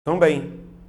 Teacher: Veja que esse M, ele vai fazer um som de I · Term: ditongo decrescente nasal